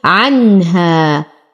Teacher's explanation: لدينا نون ساكن وبعدها الهاء في كلمة واحدة فالحكم إظهار حقيقي لا يحتاج إلى غنة. عنها ألف ساكنة ما قبلها مفتوح فهو الطبيعي حركتين.